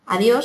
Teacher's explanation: es una palabra bisílaba de 2 sílabas y aguda, porque lleva el acento en la última.